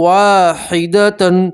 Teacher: اور تنوین کا ادغام ہے، تنوین کو واو کے اندر ملائیں گے اور ایک الف کے برابر گنہ کریں گے